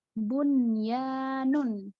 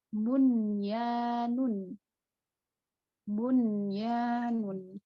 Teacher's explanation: nun sukun bertemu dengan huruf ya. Huruf ya itu huruf bi gunnah. Tapi bacaannya jelas dia. Bunyanun. Ini dikecualikan.